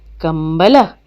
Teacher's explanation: उच्चारण करते ही मुंह से आधा म की आवाज आ रही है